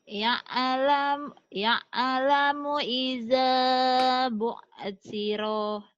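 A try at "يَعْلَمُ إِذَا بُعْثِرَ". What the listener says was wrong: Bu'thiro pendek. Ya'lamu idza bu'thiro. Ya'lamu idza bu'thiro.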